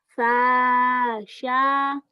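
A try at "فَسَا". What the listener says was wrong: Yang panjangnya sa-nya doang. Sa ujung lidah. Sya. sin. Sya. sin, kemudian ujung lidah sa cedal. Sa. Sa.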